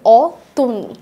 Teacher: অতুনিতেও একটা স্বরে অ যেখানে ছিল সেখানে উচ্চারণ হচ্ছে ও এর মতো করে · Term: সংবৃত উচ্চারণ